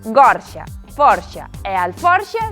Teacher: gorxa, forxa e alforxa son con o aberto